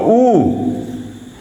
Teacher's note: ऊ के उच्चारण के क्रम में हम देखते हैं कि ओठ जो है बिल्कुल गोलाकार हो जाते हैं, दोनों ओठ मिलकर बिल्कुल गोलाकार हो जाते हैं, क्लोज हो जाते हैं। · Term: पश्च संवृत